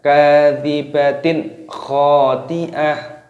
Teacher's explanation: kasroh tanwin bertemu dengan huruf kha, hukumnya dibaca idhar halqi. Cara membacanya yaitu dengan cara jelas